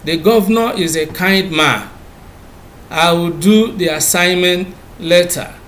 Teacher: You will discover that these statements are expressed with the falling tone.